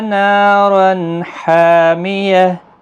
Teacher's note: اظہار حلقی ہوگا، یعنی تنوین کو ظاہر کر کے پڑھیں گے